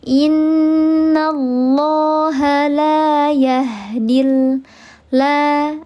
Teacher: Ada alif sebelumnya harakatnya fathah dibaca panjang dua harakat namanya adalah mad thi.